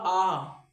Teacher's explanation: आ बोलते समय मेरा जो मुंह है वो कैसा हो रहा है, पूरा खुल रहा है, तो ये कौन सा बन जाएगा भाई, विव्रत बन जाएगा।